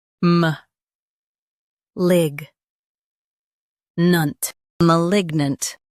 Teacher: Stress lig and keep nant light.